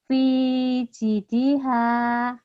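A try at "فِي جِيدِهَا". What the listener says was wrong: Ci-nya panjang. Fi jidiha.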